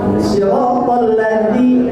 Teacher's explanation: Karena zal, orang Cianjur mengatakannya dal ageng, dal yang ada titiknya, itu zal, ya. Zal itu makhrajnya ujung lidah dengan ujung gigi seri, gitu. Nah, ketika kita mengucapkan tepat, akurat dari sana, itu dijamin tidak ada desis, ya. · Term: huruf Zal